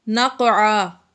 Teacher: تنوین کے بعد فا آ گیا حروف اخفا میں سے تو ہم نے غنہ کیا نقعا۔ نقعا، یہاں پر قاف حروف قلقلہ میں سے اور یہ ساکن ہے، اس میں ہم نے قلقلہ ظاہر کر کے پڑھا۔